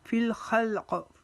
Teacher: ننکسہ فی الخلق، یہاں پر تا کا وقف آیا، اب یہاں پر تا وقف کی وجہ سے ہم قاف کے اوپر قلقلہ کریں گے